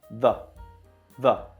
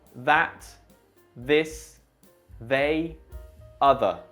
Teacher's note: And you should feel the vibration in your vocal cords, which of course makes it a voiced sound.